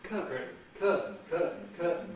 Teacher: But this point applies to both British and American English, that you tend to get a glottal stop, rather than an alveolar stop with a T